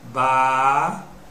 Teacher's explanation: Eu tenho o Bá como sílaba átona e o Tá como sílaba átona. Só que o Bá apareceu antes da sílaba tônica, então ele é pré-tônica. Só que o Tá apareceu depois da sílaba tônica, então ele é pós-tônica. · O Rá, porque a sílaba tônica é a sílaba que pode ser prolongada. O Rá é a sílaba tônica.